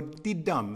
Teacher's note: 2 syllables that goes de-dum. First syllable unstressed, second syllable stressed. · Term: iamb